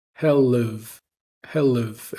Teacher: So rather than where the hell have you, we're going to drop the H in have and we're going to reduce its vowel to hell live.